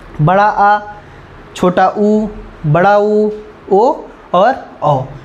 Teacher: जो जीभ के पिछले हिस्से से बोले जाते हैं उन्हें क्या कहते हैं, हम पश्च स्वर कहते हैं